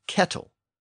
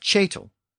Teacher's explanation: the K sound became a CH sound when it appeared before a front vowel